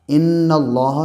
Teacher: ان اللہ، نون کے اوپر تشدید ہے، تشدید والے حرف کو پیچھے سے ملا کے پڑھتے ہیں۔ نون اور میم پر جب بھی تشدید ہوتی ہے تو ایک الف کی مقدار غنہ ہوتا ہے، یعنی ناک میں آواز کو ٹھہرا کر پڑھتے ہیں۔ اللہ کے لام سے پہلے زبر ہے، اس لیے اللہ کا لام پر پڑھا جائے گا۔